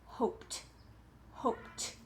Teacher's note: hope ends with a unvoiced sound so we are going to end with the unvoiced ending